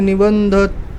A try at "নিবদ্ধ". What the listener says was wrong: নিবন্ধ নয়, নিবদ্ধ, দয় দয়।